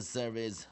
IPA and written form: ˈsərv əs (Service)